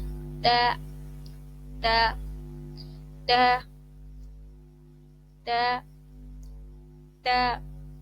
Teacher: تا جو ہے اس کا مخرج ہے کہ آپ نے زبان کی جو نوک ہے اس کو اوپر کے دانتوں کی جڑ سے ملانا ہے